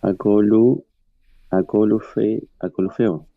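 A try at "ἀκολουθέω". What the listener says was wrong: Muy bien,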